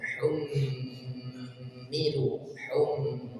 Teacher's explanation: mim bertasydid maka didengungkan dua harakat humu Hum ditahan dulu kemudian humilu aslinya panjang ada wau sukun · Kemudian hummilu Taurah, hummilu ada mim bertasydid, didengungkan dua harakat. Mim bertasydid maka didengungkan dua harakat.